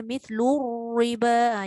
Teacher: Semua perkataan humur riba ke kumur riba ke itu semua dibaca ra nipis. Sebab ra berbaris bawah.